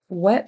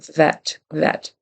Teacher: V becomes a w so he needs to say vet vet V is like a voiced f with your teeth on your lower lip